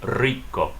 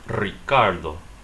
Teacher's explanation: The R in Spanish, if R starts off a word in Spanish, you're supposed to roll it. So since R is the first letter in the word rich or delicious, say rico, or in this word, Ricardo.